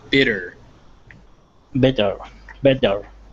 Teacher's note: try to make that t into a d